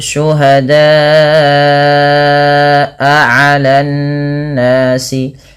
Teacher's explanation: Kemudian pada lafal syuhada'a 'alan nasi, pada lafal da panjangkan bunyi suara huruf da sepanjang 4 atau 5 harakat karena ia termasuk daripada bacaan mad wajib muttasil dan dia tidak boleh kurang, tidak hanya cukup syuhada 'alan nas, tapi dia wajib 4 atau 5 harakat.